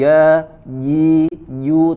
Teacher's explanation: perhatikan di huruf jim, ja, ji, ju, tidak ada angin yang keluar, ya. Ja hi, kemudian huruf ha-nya sempurnakan dari wasatul halq, ya, dari tengah tenggorokan, ya.